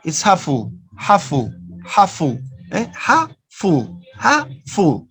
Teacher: Together, it's half full. Just one sound. This is gemination.